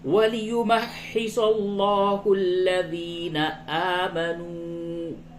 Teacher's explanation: لام کو پر کریں گے، یہ لفظ اللہ کا لام ہے، اس سے قبل زبر ہے، اس لیے یہ لام پر ہوگا۔ وَلِيُمَحِّصَ اللَّهُ الَّذِينَ آمَنُوا، واو مدہ ہے، اس کو تھوڑا کھینچ کے پڑھیں۔